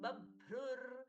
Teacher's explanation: ब के साथ में भगवान जी का भ महाप्राण ब्रुर ब्रुर रु के बाद में विसर्ग का ऋ में परिवर्तन